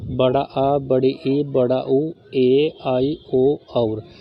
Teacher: इनको बोलने में ह्रस्व स्वर से थोड़ा ज़्यादा समय लग रहा है। इनकी संख्या अगर पूछ लें इनकी संख्या होती है टोटल 7। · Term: दीर्घ स्वर